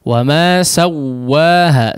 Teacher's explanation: Ini namanya idgham mutamatsilain ya. Idgham mutamatsilain tidak pada huruf waw tidak digunnahkan ya, tapi menjadi tasydid saja. Wa ma sawwaha langsung ya, jangan sawwa.